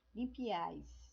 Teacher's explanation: Então, a reunião é de 3 vogais. Então, num golpe de voz só, você fala as 3 vogais. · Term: Triptongas